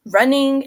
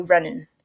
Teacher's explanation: Midwesterners often drop the final G sound in words ending in ing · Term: G dropping phenomenon